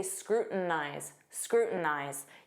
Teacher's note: Native speakers will often use a flap T and say scrutinize, scrutinize.